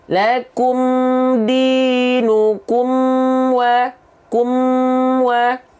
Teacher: Jadi mim sukun tidak boleh kita pantulkan, ya.